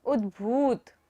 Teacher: भा पर बड़े ऊ की मात्रा है तो हम भा को लंबा लेंगे